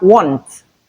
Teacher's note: The last sound is T, which is the voiceless alveolar plosive sound.